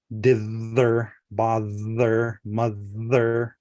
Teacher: There's also the th in the middle which is voiced.